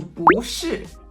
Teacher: 不 is usually tone 4, like 不好, 不喜欢. But when it's in front of another tone 4, it gets very shy and it turns into tone 2.